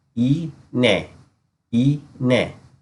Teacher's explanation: Notice how we do not pronounce the G. Instead, it helps with the following letters to be pronounced. In this case, it takes the form of a Y. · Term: soft or silent G